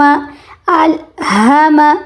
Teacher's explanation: ہا حلق کے آخری حصے سے ادا ہوگا تو الہم ہم یہ آواز آنی چاہیے.